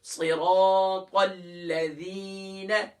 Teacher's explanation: زی نہیں ہے یہاں ذال ہے، سافٹ کریں گے